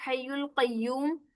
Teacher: हा, वस्त और हलक से निकलेगा